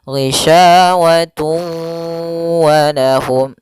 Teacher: Maka cara membacanya yaitu tanwinnya dimasukkan ke huruf waw kemudian ditahan